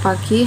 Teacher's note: karena huruf pada kata siap diucapkan dengan kedua bibir tertutup sedangkan huruf P pada kata pagi harus dilepas untuk bergabung dengan bunyi huruf a